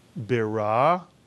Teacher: The shva under the bet comes under the first letter of a word and under a letter with a dagesh. So the shva is pronounced ih, as in the word fish, even though it is not counted as a vowel.